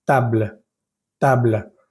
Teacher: Por ejemplo, la primera palabra que es mesa, llegamos hasta la letra L, table, table. Pero cuando termino de pronunciar la L, suena un poquito como un pequeño aire que da la impresión de que estamos pronunciando la E, pero no la estamos pronunciando.